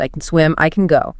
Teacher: We use what's called a schwa sound. It's a very weak vowel.